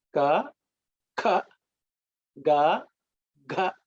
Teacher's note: the second ka has what is called a puff of air comes along when you produce the sound. So that's called aspirated.